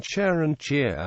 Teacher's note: Merger of the vowels of near and square, making chair and cheer homophones.